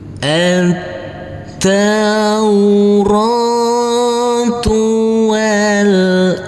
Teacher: Kita baca dengan huruf nun yang bersamar-samar dan didengungkan.